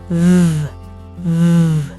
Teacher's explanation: Teeth on lip but add vibration.